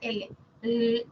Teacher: toquecitos las laterales Se caracterizan porque el aire no sale por el centro de la boca sino que el aire se escapa por los costados molares o de la mejilla de la del hablante por eso